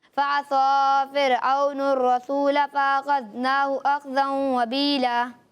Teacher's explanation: آپ نے صاد اور سین دونوں کو ثا کے مخرج سے ادا کیا